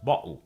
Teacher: Glottal stop. It's pronounced bottle.